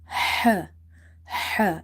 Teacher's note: So if you see our throat is divided into three parts lower, middle and upper part on the basis of pronunciation of the letters. So H is from the middle part of the throat and it sound is H.